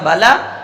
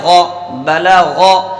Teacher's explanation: شروع میں باریک رکھا بلا، اور آخر میں پر کر دیا غو